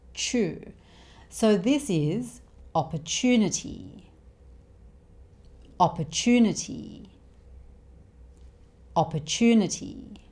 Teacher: 'tu' is the stressed syllable here, and it sounds like 'chew', like when you're chewing food.